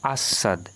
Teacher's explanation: দন্ত স এর সঙ্গে ব যুক্ত আছে তাই দন্ত সটি দুবার উচ্চারিত হচ্ছে